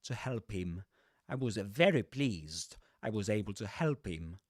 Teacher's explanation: you don't pronounce the ha there